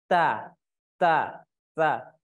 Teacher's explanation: Huruf ta ujung lidah bertemu dengan pangkal gigi seri atas